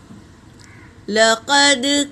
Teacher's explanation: دال پر سکون ہے، یہ قلقلہ کا قاعدہ ہے، آواز ٹکرائے گی